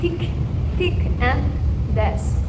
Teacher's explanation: Vibration and voiceless are interdental fricatives, where the air is forced through the tongue and the upper teeth